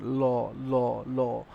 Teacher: আর পার্ষিক ধ্বনি ল ল যখন উচ্চারিত হয় জিহবাটা আমাদের যে জিহবা আছে জিহবাটা তখন একদম দুই পাশে যেন একদম প্রসারিত হয়ে টাচ করে আমাদের তালুতে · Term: পার্শ্বক ধ্বনি